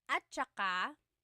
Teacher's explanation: Okay, and then at saka, technically it's spelled at saka, but when it's pronounced, remember the TS combination, it makes that ch sound